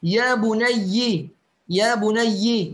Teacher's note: يقرأ شعبة يا بني يا بني بكسر الياء